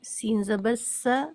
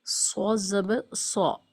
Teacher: سین اور صاد دونوں ہی ہم آواز اور ہم مخرج حروف ہیں۔ ہم آواز مطلب دونوں کی آوازیں بالکل سیم ہیں، سین زبر س، صاد زبر صا۔